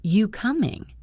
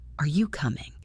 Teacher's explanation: Sometimes, the word are disappears completely.